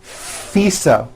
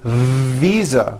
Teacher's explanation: i said fisa with an unvoiced f i should have said visa